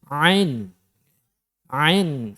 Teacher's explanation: dari tengah tenggorokan agak ditekan tapi harus benar-benar dari tenggorokan Tengah tenggorokan ya kadang nonton kadang jadi harus kemudian nanti ketika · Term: makhrojnya Ain